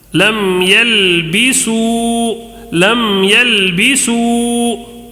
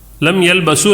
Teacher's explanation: واو ساکن سے پہلے پیش ہے تو واو مدہ، تھوڑا سی واو کو کھینچنا ہے